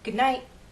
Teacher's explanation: when T is at the end of a word, as in night, good night, Americans often change that T to a glottal stop.